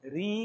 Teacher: अब ऋ इस वर्ण का उच्चारण री करते हैं, इस उत्तर प्रदेश में तो करते ही है, उत्तर भारत में ही करते हैं।